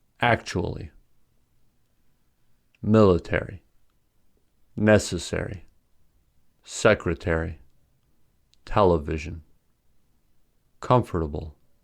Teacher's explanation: The following words have stress on the first syllable.